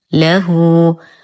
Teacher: نتم ضمة الهاء ونصلها بصلة صغرى بمقدار حركتين